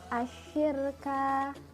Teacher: Kemudian ada alif lam syamsiyah, karena terdapat huruf lam yang bertemu dengan salah satu huruf syamsiyah yaitu shin, maka alif lam tidak dibaca dan langsung masuk ke dalam huruf setelahnya, dibaca seperti asyirka.